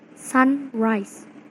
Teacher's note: normally has the stress on the first syllable or the first element